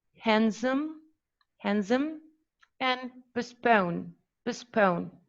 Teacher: Okay, and for the last pattern, we have that the voiced here, the voiced alveolar plosive and the voiceless alveolar plosive were dropped